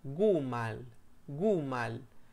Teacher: prácticamente pronunciamos la u como oh